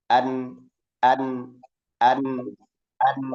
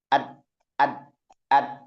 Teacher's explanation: Akhirnya antara rakhaah dan syidah ini bergabung, jadilah tawasuk.